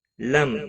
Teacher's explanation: میم ساکن کے بعد یا آیا ہے، اظہار شفوی ہوگا